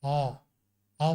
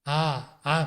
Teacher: औ एक अलग चीज है आ एक अलग चीज है औ औ बोलेंगे तो मुंह में सिकुड़ता है गला सिकुड़ता है मुह सिकुड़ता है औ आ आ कहेंगे तो मुह फटता है गला खुलता है